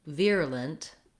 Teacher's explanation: the word virulent has first syllable stress, and the VIR has the ear diphthong. So sometimes I write that as EAR, like my ear.